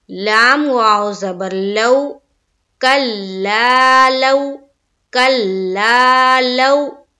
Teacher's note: تو واو ساکن سے پہلے کسی بھی حرف پر زبر آئے تو وہاں پر واو لین کا قاعدہ بنتا ہے، اور واو لین کو ہم کس طرح پڑھتے ہیں؟ نرم آواز کے ساتھ، جلد اور معروف، اور سختی نہیں کرنی ہے